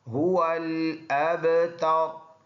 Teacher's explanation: اگلا ورڈ ہا سینے سے ادا ہوگا اور اس کے بعد ہا کے بعد واو آیا ہے، دونوں ہونٹوں کو گول کر کے ادا کریں گے